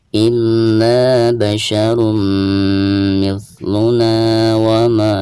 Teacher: tanwin yang ada di atas ro tersebut itu harus dimasukkan ke dalam huruf mim sekaligus digunakan karena ini termasuk idgham biguna ya.